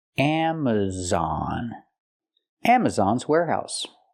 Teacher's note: We have a stress on the first and third syllable